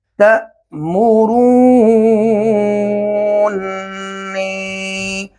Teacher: یہ پڑھنے میں بہت مشکل تھا، تو لہٰذا پہلے نون کو ہم نے دوسرے نون کے اندر مدغم کر دیا، مدغم کر کے اور اس کو بنا دیا تأمرونی۔ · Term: ادغام کبیر